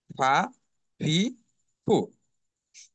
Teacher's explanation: নিচের ঠোঁট পেটের সামনের উপরের দুই দাঁতের আগার সঙ্গে লাগিয়ে উচ্চারণ করতে হবে।